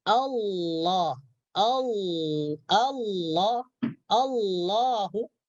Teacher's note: ketika kita mengucapkan huruf lam tebal lam tafkhim maka dia huruf lam nih dia tidak keluar dari pada tepi ujung lidah Bahkan dia apa namanya eh lebih melengkung kepada makhraj huruf nun